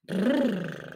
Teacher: C'est le brrr, la trille des lèvres.